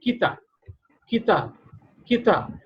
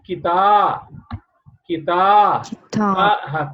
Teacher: Ta will be pronounced longer. And stretch kar dena. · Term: stretched